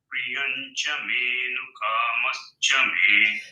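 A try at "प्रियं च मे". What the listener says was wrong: Pri can be further lower. Priyam lala priyam cha me no kamascha me.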